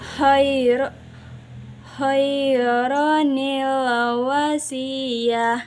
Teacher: menyambung antara lafaz satu dengan lafaz lainnya dan War yang terjadi ketika tanwin bertemu dengan Hamzah washal maka huruf nun itu harus dibaca harakat kasrah